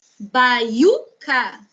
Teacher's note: o U é tônico, só que antes dele veio um ditongo